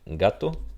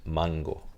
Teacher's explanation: se convierte en fricativo en todo momento menos posición inicial, como en el caso de gato, o después de una nasal, como en el caso de mango